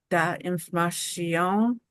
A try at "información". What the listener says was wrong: Okay, and get that sh to go bye-bye. Información.